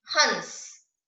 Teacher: और जब चंद्र बिंदु लगा देंगे तो ह पर जोर देते हुए नाक और गले का प्रयोग करते हुए बोलेंगे हंस